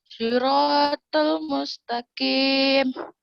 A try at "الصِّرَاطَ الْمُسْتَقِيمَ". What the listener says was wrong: لا صراط صاد، انتبه للصاد. صراط اهدنا الصراط المستقيم.